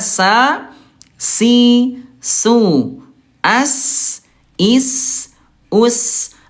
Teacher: ujung lidah ah disentuhkan dengan ujung gigi seri bawah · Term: huruf sin